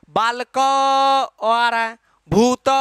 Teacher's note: बालक का उच्चारण करते तो लास्ट में अ आता है